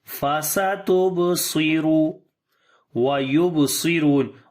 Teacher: On the ba we make qalqala, which is weak qalqala.